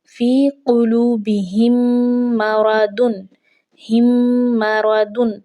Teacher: میم ساکنہ کے بعد میم اگر آ جاتی ہے تو پھر ہم نے اس میں گنہ کر کر پڑھنا ہے، تو گنہ کر کے پڑھنے سے ادغام شفوی ادا ہوتا ہے۔